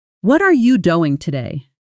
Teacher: In the question, "What are you doing today?" Notice how the words are and doing get extra emphasis, extra stress, while the other words get compressed and quieter. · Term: sentence stress